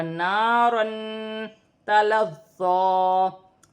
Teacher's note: اور یہاں پر الف مدہ ہے، 2 زبر کی تنوین ہے، ایک الف کی مقدار کھینچ کر پڑھا جائے گا الف مدہ کو، اور 2 زبر کی تنوین میں غنہ کیا جائے گا